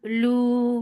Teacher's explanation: for the circle lips, make it two counts long